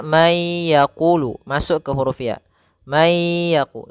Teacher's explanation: ikhfa yaitu membaca di antara Idgham dan izhar kalau idgham artinya Dia memasukkan suara nunnya dimasukkan ke huruf setelahnya